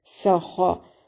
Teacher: है, नन, यहाँ पर नून तनवीन का इख्फा मअल गुन्ना, सख, सीन को बारीक सीटी के साउंड के साथ अदा करेंगे और खा को मोटा अदा करेंगे